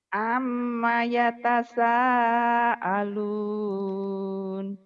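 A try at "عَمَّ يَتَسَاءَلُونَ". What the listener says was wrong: Ainnya kurang ya, nggak apa-apa, terus dulu.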